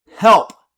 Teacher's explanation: it's also got the too loud sound, the P, which is called the plosive